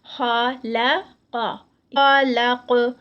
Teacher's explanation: خا ہیوی، لام لائٹ اور قاف پھر ہیوی.